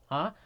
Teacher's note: actually first of the six guttural letters because when you say you should feel the vibration in the middle part of the throat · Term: ha